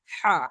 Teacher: এই বড় হা উচ্চারণ তাহলে কণ্ঠনালীর মাঝখান হতে